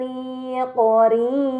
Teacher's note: Mad bertemu huruf yang disukunkan karena waqaf maka harus dibaca panjang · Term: Mad Arid